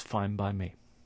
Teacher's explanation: Here we have a n sound at the end of fine, followed by a b sound in by. So the n sound starts to sound like a m. So it's fine by me.